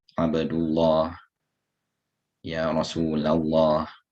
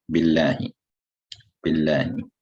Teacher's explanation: You have the letter Lam, it will have Tafkhim when it is in the word Allah and is preceded by a Dhamma or a Fatha.